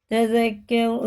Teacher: زال باریک ہوتا ہے، راپور ہوئے گا